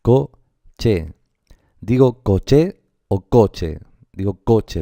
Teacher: el acento recaería sobre la sílaba co